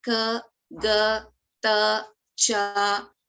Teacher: Alpa Pranaha, we use less breath to pronounce the letter, and Mahapranaha, we use more breath, more prana, more air to pronounce the specific letter.